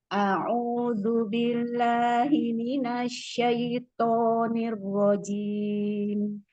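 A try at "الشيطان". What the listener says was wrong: Toknya asyaitoni di itu lebih apa lebih itbaq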